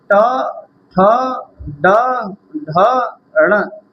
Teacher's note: टवर्ग का उच्चारण स्थान मूर्धा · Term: मूर्धन्य